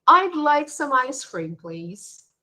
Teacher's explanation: especially when you use the word please you can notice how you go down · a request using i'd like our voice falls not rises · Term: intonation